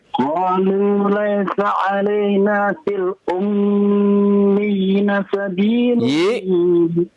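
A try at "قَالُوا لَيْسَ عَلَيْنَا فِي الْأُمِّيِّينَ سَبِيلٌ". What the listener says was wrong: Y-nya panjang. Ya. Coba lagi Pak. Fil ummiyina sabil. Itu ada tanda panjang ya Pak ya.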